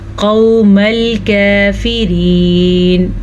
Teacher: क़ाफ को पुर पढ़ेंगे क्योंकि क़ाफ हमेशा ही पुर पढ़ा जाता है